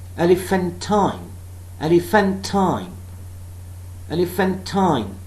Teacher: Unstressed, unstressed, stressed, unstressed.